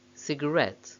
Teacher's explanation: when the word comes at the end of an utterance it's stressed on the last syllable